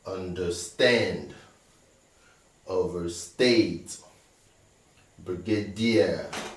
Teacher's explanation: all these other words have been stressed on the last syllable